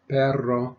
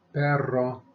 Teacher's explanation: the Double R is rolled and the single R is rolled but only at the beginning